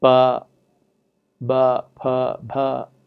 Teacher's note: voiceless unaspirated pa, voiced unaspirated ba, voiceless aspirated pa, voiced unvoiced aspirated bha.